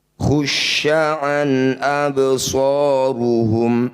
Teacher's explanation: fathah tanwin bertemu hamzah disebut bacaan izhar halki. Bunyi fathah tanwinnya baca jelas, tidak usah dengung.